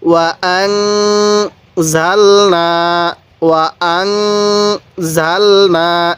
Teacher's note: এই নুনের মধ্যে গুনাহ করব, কারণ নুন সাকিনের পরে যদি ইকফার হরফগুলো আসে তাহলে আমরা ওই নুন সাকিনটি গুনাহ করব